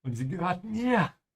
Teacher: Und sie gehört mir. With a bit of emphasis on mir.